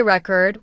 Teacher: If you say record with stress on the first syllable, it's a noun, like a music record. But if you say record with stress on the second syllable, it becomes a verb